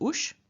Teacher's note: the s after the u changes into sh and so we don't have us but we have ush and